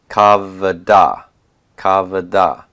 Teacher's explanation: And because that shava is a vocal shava, I'm going to see a metheg to disambiguate that kametz and make sure that everybody knows that that is going to be pronounced as a long A and that the shava will be vocal